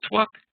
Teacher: the V becomes like a W